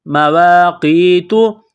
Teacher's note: قاف یا زیر قی، قاف کو موٹا کرنا ہے، یا ساکن سے پہلے یہاں زیر ہے، حروف مدہ یا ہے، ایک الف کے برابر اس کو کھینچیں گے